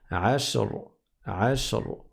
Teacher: C'est une fatha, donc c'est l'emphase. On prononce gravement et on va dire ashr, ashr.